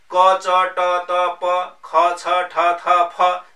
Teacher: क च ट त प ख छ ठ थ फ जस्ता ध्वनिहरू अघोष हुन्छन्।